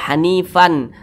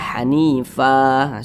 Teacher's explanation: dengan huruf wa nah tapi kalau kita berhenti pada huruf Fa maka huruf Fa dibaca panjang kemudian tanwinnya itu dihilangkan diganti menjadi baris fathah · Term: Mad Iwat, mad iwat